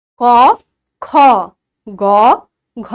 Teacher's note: ক তে অল্প শ্বাসবায়ু লাগছে। খ তে বেশি লাগছে। গ তে অল্প লাগছে ঘ তে বেশি লাগছে। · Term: অল্পপ্রাণ